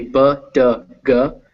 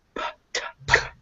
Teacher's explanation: if you say B, D, G, but then you whisper it so that you're not using your vocal cords, you go P, T, K